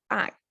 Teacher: it's only vowels involved there's no consonant here and it's falling tone as well